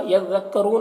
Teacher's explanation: را کے اوپر پیش ہے، را کو پر پڑھیں گے، اور وقف کی صورت میں مد عارض وقفی ہوگا تو اس طرح سے پڑھیں گے۔